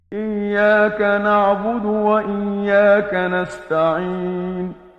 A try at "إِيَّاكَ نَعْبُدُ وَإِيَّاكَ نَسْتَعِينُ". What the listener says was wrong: ابھی عین جو ہے نا اس کے نیچے زیر ہے، یہاں پر غلطی سے لگا. اب یہاں پر پھر دیکھیں یہاں پر ایاک، اب یہاں کو پھر اس کو لمبا کیا، یا الف سے پہلے زبر ہے، یہاں پر الف مدہ ہو رہا ہے.